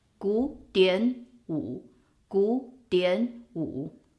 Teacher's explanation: So the third tone falls on the third character. The first two characters, because it's one word, it becomes both second tone. 古典舞, 古典舞. That is the first situation when you have a 2-1 structure of a 3-character word.